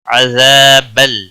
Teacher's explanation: عذاب الف مدہ ہے، ایک الف کے برابر کھینچ کر پڑھیں گے.